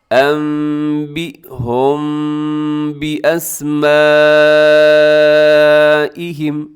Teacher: تھوڑی دیر کے لیے آواز کو ناک میں چھپاتے ہیں